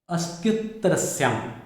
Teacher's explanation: इसके कारण अ लघु होते हुए भी गुरु हो गया, दीर्घ हो गया। अ ह्रस्व है लेकिन आगे आने वाले संयुक्ताक्षर के कारण ये दीर्घ हो गया